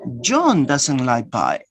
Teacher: If you give stress to John, that you emphasize that John is the person who doesn't like pie. Other person could like pie, but not John.